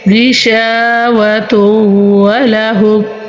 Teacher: غین جو ہے حروف مستعلیہ ہے اور ادھر ہم غنہ کریں گے